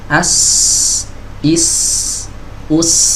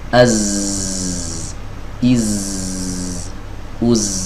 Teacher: Sin dan zai sama-sama suaranya mengalir, tapi untuk urusan nafas beda. Ya, sin mengalir, zai tidak, ya. Buktinya dia bergetar di sini ketika kita mengucapkan huruf zai.